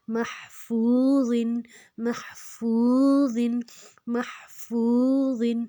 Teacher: واؤ کے اوپر جزم ہے تو اس کو دو حرکت لمبا کریں گے